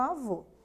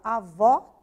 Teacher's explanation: esse sinal acento agudo indica que a tônica tem som aberto